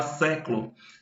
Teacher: Por exemplo, a palavra século, sé é a sílaba tônica.